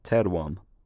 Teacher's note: this vowel lost its lip rounding in the last syllable